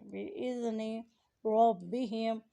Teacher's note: زال کو زبان کی نوک اوپر کی دانتوں کی جڑ کے ساتھ لگا کر ادا کریں · را کو مور یعنی موٹا ادا کریں